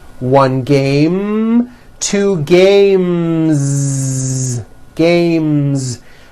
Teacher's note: m sound which is a voiced consonant so because of that when you add an s the s should also be voiced · the last sound you hear in the word game is the m sound which is a voiced consonant so because of that when you add an s the s